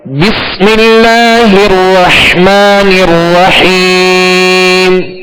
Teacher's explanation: بس، اب اس میں سکون ہے تو اس میں کامل سکون ادا کریں گے، اور اسی طرح آگے را جو مشدد ہے اس کو بھی دوہرا پڑھیں گے، اور حا کو واضح پڑھیں گے۔ · 2 حا ہے، رحمان الرحیم، حا کو وسط حلق سے پڑھیں گے